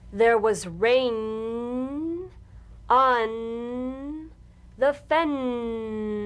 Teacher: Sustain the N in these sentences.